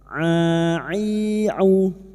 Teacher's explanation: Ma mana'aka huruf ain ya, jangan samakan dengan hamzah. Huruf ain wastul halqi, makhrajnya ada pada tengah tenggorokan.